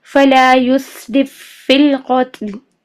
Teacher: اور تام کا ہم نے کہا تھا کہ ادغام تام ایسا ہوتا ہے کہ پہلا حرف دوسرے حرف میں پوری طرح داخل ہو جائے اور اس کی کوئی صفت باقی نہ رہے. تو پہلا فا دوسرے فا میں بالکل داخل ہو جائے گا اور ہمیں ایسا لگے گا کہ جیسے ہم ایک ہی فا ادا کر رہے ہیں